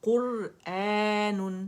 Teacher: را موٹی مخفف پڑی جائے گی دمہ کی وجہ سے